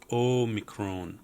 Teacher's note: Now this is one where there's a difference from the Erasmian, and the Omicron and the Omega are both O sounding, long O's